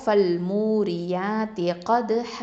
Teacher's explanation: அடுத்தது ஹ 2 ஹரக்கத்தை நீட்டி நிப்பாட்டணும்